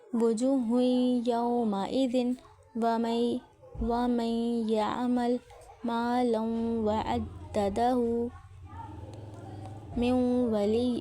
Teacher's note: نون ساکن تنوین کے فوراً بعد یا واو آ جائے تو نون کو ان میں نامکمل ملاتے ہیں. ملاتے وقت یا واو کے مخرج پر جاتے ہیں لیکن تھوڑی آواز منہ سے اور تھوڑی آواز ناک سے نکلتی ہے. 2 حرکات 2 کاؤنٹ کا غنہ ہوتا ہے. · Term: نامکمل ملانا ناقص